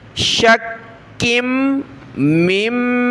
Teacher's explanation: ملایا، کاف کو سخت کریں گے تشدید کی وجہ سے اور کاف کو میم کے ساتھ ملانے کے بعد یہاں ہم نے ناک میں آواز پیدا کرنی ہے